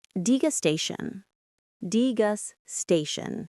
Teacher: The stress is on that third syllable